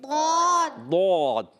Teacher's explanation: ضاد کا مخرج ہے حافۃ اللسان، یعنی زبان کا بغلی کنارہ ادھر سے یا ادھر سے، کدھر سے بھی آپ زبان کو لگائیں تو اوپر داڑوں کی جڑوں میں لگانا ہے، اور 5 داڑوں کی جڑوں میں، ایک طرف کی 5 داڑوں کی جڑوں میں لگے گا تو ضاد ادا ہوتا ہے.